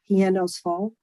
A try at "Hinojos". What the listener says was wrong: Let me just say for everyone, it's Hinojos. Don't pronounce the H. It's just Hinojos.